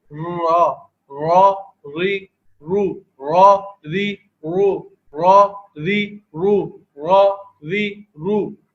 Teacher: تو یہ را کی ادائیگی تقریر کے ساتھ ہوا کرتی ہے. اور زبان کی جو طرف لسان ہے، طرف لسان کی کچھ جو نیچے کا حصہ ہے، پشت کا حصہ جو ہے اس کی کیفیت بن جایا کرتی ہے ادائیگی کے اعتبار سے.